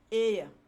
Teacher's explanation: the a sound combines with the schwa sound to give you air